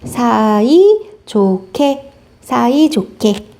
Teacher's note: 히읗과 그 다음 기억이 만나서 소리가 거세진다